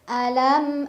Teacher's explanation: lam yang sukun dimasukkan ke lam kedua ya cukup ditekan tanpa berdengung